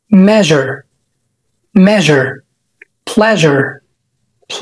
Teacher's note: وقول جريبه من صوت حرف الشين ولكن مهزوزه شويه فمش بنقول شين بنقول ج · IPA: /ʒ/